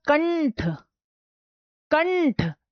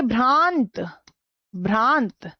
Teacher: तो यहां पर जैसे मैंने बोला कंठ कंठ तो कण के बाद क के बाद जो न आया वो नाक से आया है